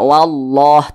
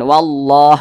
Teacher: maka lafaz Allahnya dibaca tebal Nah maka dibaca wallah ditebalkan wallah seperti seperti itu kemudian di